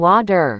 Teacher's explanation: feel how your tongue just lightly flaps against the roof of your mouth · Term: light quick tap